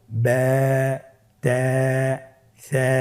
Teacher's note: আলিফ হরফটি পাতলা হরফের পরে এসেছে তাহলে আলিফকে পাতলা করেই পড়তে হবে